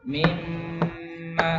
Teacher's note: Nun dan mim tasydid pertama ya, sangat sempurna. Kurang lebih 2 ketukan ya.